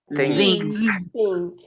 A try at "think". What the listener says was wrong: Ok, por ahí me suena mucho el think. Recuerden que es muy suave. Think.